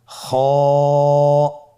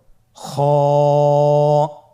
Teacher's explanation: খ হরফটির মাখরাজ হলো কন্ঠনালীর শেষ ভাগ হতে উচ্চারণ করতে হয়। কন্ঠনালীর শেষ ভাগ।